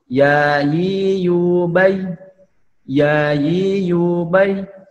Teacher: Cara mengucapkannya itu dengan menempelkan tengah lidah ke langit-langit, ya, dengan sifatnya yang jahar, tidak menghembuskan nafas